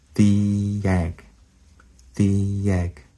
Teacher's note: in between the and egg, we have a a Y sound.